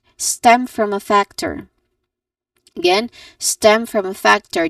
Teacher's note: The s the stress syllables are stem and the first syllable of factor which is fact.